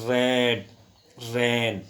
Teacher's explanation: जब टंग का जो टिप का जो भाग है टकराता है किससे? अगेंस्ट द टीथ रिज, दांतों की रिज से। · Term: रोल